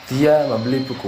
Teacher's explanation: dengan tekanan pada kata dia